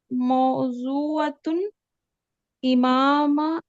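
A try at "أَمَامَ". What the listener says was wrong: तो कह रही थी अमाम लीजिए, इमाम की जगह अमाम कर लीजिए, अमामल।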